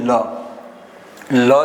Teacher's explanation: લ તમે બોલો એટલે જીભનો આકાર નળિયા જેવો થાય છે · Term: દંત્ય પાર્ષિક વ્યંજન